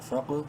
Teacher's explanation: انفق، فا قاف زبر فق، فا کو قاف سے ملاتے وقت قلقلہ کریں گے اور بولڈ کر کے پڑھیں گے، قاف کو بولڈ لیٹرز میں سے ہے۔